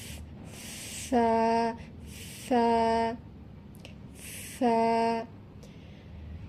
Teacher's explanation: উপরের সামনের দুই দাঁতের আগার সাথে লেগে প্রথমে একটু হালকা বাতাস বের হবে।